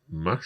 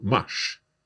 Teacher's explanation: we make the R join the S and it becomes a sh sound.